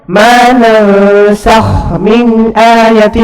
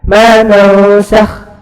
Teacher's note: Maka di sini idgham mutamathilan mutlak dibaca izhar.